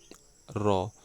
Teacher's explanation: इसमें मुख द्वार जीभ की नोक से शीघ्र ही बंद होता है और दो तीन बार खुलता है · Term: लुंठित